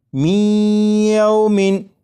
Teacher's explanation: میومن، یہ جو آواز ہے می ای، یہی ادغام ہو رہا ہے، اور ادغام اس طرح کہ نون ساکن کو یا میں شامل کر کے پڑھا جا رہا ہے